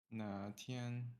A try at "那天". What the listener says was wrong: Na. the A goes downwards with intonation. Na. You don't go back up.